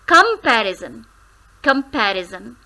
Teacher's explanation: There are 4 syllables, but the stressed one is the first syllable, that is come.